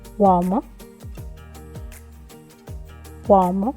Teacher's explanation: So for uomo, you hear more a wa sound, and this is just because we have the o following the u, so wa. But if you have to say it more slowly, it would be uomo, uomo.